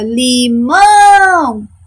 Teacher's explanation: na palavra limão, a minha sílaba tônica é o mão